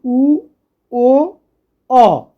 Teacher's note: এই তিনটি ধ্বনি উচ্চারণের সময় আমরা ঠোঁটটাকে কিন্তু অনেকাংশে গোল করি। যেমন প্রসারিতের ক্ষেত্রে আমরা দুদিকে ছড়িয়ে দিয়েছিলাম, এক্ষেত্রে কিন্তু ঠোঁটগুলোকে আমরা অনেকটা গোল করে উচ্চারণ করি। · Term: কুঞ্চিত স্বরধ্বনি